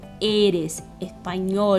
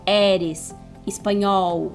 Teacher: o E e o O geralmente são mais fechados e não abertos como no português. Então, eres español, e não eres espanhol.